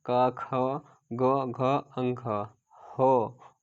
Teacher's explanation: क, ख, ग, घ, अंग, हो और साथ ही साथ विसर्ग। सभी का उच्चारण स्थान कंठ से।